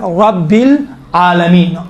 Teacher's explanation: رب را کو چونکہ زبر ہے موٹا تلفظ کیا جاتا ہے